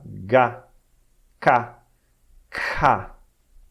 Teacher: a língua bloqueia o fluxo de ar encostando no palato mole, no véu. Então por isso são chamadas de velares.